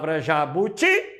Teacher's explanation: jabuti é uma oxítona porque o ti é a mais forte